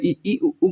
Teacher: आप जब ई उ कहेंगे तो दांत बिल्कुल बंद के बराबर हैं, बंद नहीं है पर बंद के बराबर हैं। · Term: समृद्ध